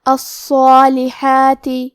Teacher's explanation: مد الف اپنے پیچھے والے حرف کا حکم لیتا ہے تفخیم میں اور ترقیق میں، لہذا ہمیں مد الف کو بھی بھاری آواز میں پڑھنا ہے · حرف الحاء کی ادائیگی حلق کے درمیان والے حصے سے ہے